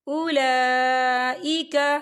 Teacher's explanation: اولا لام کے پر کھڑی حرکات ہے اور اس پر مد بھی ہے تو ہم اسے 4 حرکت کے برابر کھینچ کے پڑھیں گے۔